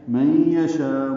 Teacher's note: نون ساکن کے بعد یا آنے کی وجہ سے ادغام ناقص مع الغنہ ہے